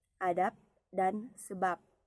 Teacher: fonem B pada silaba akhir kata adab dan sebab diucapkan P, adab dan sebab, yang persis sama dengan pengucapan fonem P pada atap dan usap. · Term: netralisasi